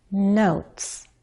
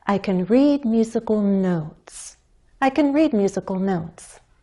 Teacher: we have to go up a little first in order to slide or glide down